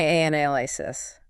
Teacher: The first A becomes very soft, almost a quick breath and the power hits the NAL. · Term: stress shift